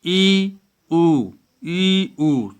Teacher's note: संवृत अर्थात क्लोज्ड। अत्यंत संकीर्ण अर्थात जीभ मुंह की छत तक उठी हुई है